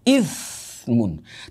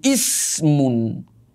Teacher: Tapi kalau gigi depan sudah tidak ada, maka ithmun bisa berubah menjadi ismun.